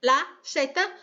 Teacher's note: na América Latina, o Z é igual ao som de S, normal.